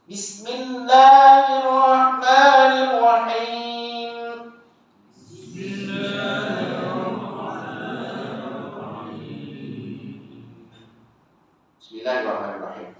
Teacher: Jadi jelaskan bunyi sin mati situ. Bacaan dia nipis.